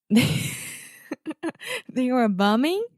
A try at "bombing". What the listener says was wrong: I would even open your mouth a little bit more